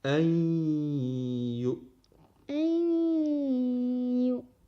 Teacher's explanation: يا ضمة همزة سكون يو. بعد نون ساكن يأتي حرف الياء، حرف إدغام. إدغم نون ساكن بالياء.